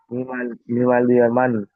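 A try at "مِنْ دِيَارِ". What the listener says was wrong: আলিফটা হবে না, আলিফটা উচ্চারণ হবে না, মিম দুই যাওয়ার মান।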